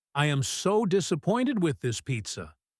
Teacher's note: If I say I am so disappointed with this pizza, my voice goes down. It sounds serious.